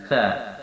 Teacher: Yang kedua, sifat sa ini adalah rokhawah, dalam arti dilonggarkan, tidak ditekan, tidak juga pertengahan, tapi dilonggarkan